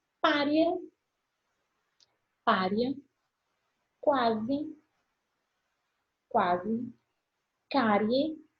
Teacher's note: A crescente, eu tenho uma semivogal, que é mais fraca, e depois eu tenho uma vogal que é mais forte